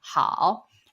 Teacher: the how means okay good well so how just feel it go really down and then up how and then fourth tone is downtown it's like saying no